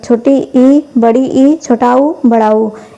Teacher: समृद्ध स्वर के उच्चारण में मुख लगभग बंद रहता है